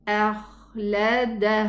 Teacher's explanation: Just from the throat. The ha is pronounced from the furthermost part of the throat. If I'm gonna connect, I'm gonna pronounce this 2 counts.